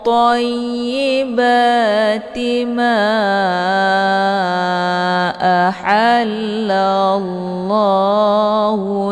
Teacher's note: dibaca panjang boleh empat atau lima kali ketukan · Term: Mad Jaiz munfasil, mad jaiz munfasil